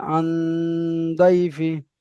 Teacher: তাই নন সাকিনকে গুণনা করে এক পরিমাণ নাকে তুলে তাই নুন তাই নুন সাকিনকে নাকে তুলে এক আলিফ পর্যন্ত গুণনা করে পড়িতে হয়